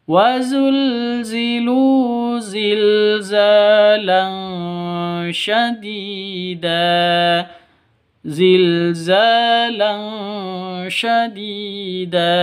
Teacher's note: za panjang dua ketukan karena ada alif diawali dengan fathah · Tanwin bertemu dengan shin. Cara bacanya samar didengungkan, siap-siap ke huruf shinnya. Kenapa? Karena ikhfa hakiki. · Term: mad asli